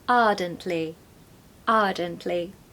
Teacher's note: if you want a British accent, don't pronounce the R, okay? So take away that R so that it sounds like ardently, ardently.